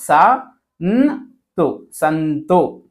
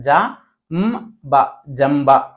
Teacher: ಅನುನಾಸಿಕ ಅಕ್ಷರ ಅದನ್ನ ಅರ್ಧ ಓದಬೇಕು